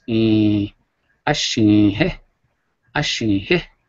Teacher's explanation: The I is normal sound, but if I stretch it, it's E, but I gotta go through the nose, so it's E, ashin he. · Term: nasal